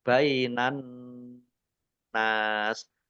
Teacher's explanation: Nun tasdid dibaca gunnah atau mendengung, ditahan 2 harokat.